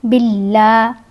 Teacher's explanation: با کو لام کے ساتھ ملائیں گے، با کے نیچے زیر ہے، اور لام سے پہلے، اس میں جلالہ کے لام سے پہلے اگر زیر آئے تو لام کو باریک پڑھا جائے گا۔ لام کے اوپر کھڑی زبر ہے، لام کو لمبا کیا جائے گا۔